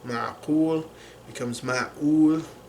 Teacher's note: the qaf becomes the epiglottal stop again here in this dialect of Arabic